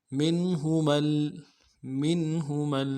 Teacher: میم کو نون کے ساتھ ملانا ہے، نون ساکن ہے لیکن یہاں پہ اظہار ہوگا